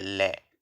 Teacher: जीभ के दोनों साइडों से हवा बाहर निकल रही है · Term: पार्श्विक